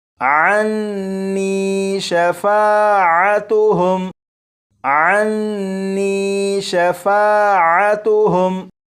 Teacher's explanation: नून मुशद्दद पर गुन्ना करेंगे